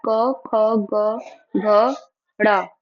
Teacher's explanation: जीवामूल्य वे वर्ण होते हैं जिनका उच्चारण जीभ के मूल या बिल्कुल पिछले भाग से होता है। पाणिनीय शिक्षा के अनुसार अगर हम देखें तो जो क वर्ग है यानी कि क, ख, ग, घ, ड़, इनका जो उच्चारण स्थान है वो जीवा मूल है